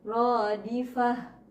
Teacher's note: Cara bacanya tatba'uhar radifah. Ya, jadi mematikan ta marbutoh itu sama dengan hadomir, menjadi huruf ha, bukan menjadi huruf ta ya. Radifah, ke ha besar.